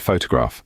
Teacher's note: in the word photograph the first syllable foe is stressed